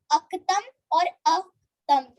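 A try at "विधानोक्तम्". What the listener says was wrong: Yeah, so it is Vidhanoktam. No, it is Vidhanoktam. It is pronounced together. I've separated this word so that you're able to read it clearly. So it's Gyatva Shastra Vidhanoktam.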